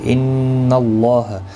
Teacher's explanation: ان اللہ نون مشدد پر گنہ ہوگا، اللہ کا لام زبر کی وجہ سے پر پڑھا جائے گا